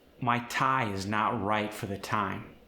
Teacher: The I sound tends to be very far forward and nasally.